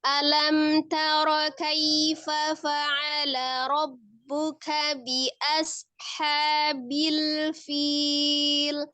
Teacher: Sempurnakan alif fathah. Alam, lamnya kan dia tengah-tengah ya, tawasud bain ya. Jadi tidak terlalu ditekan, juga tidak terlalu lepas ya.